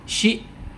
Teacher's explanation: huruf dzal yang sukun untuk menyempurnakan sifat rokhawanya, mengalir suaranya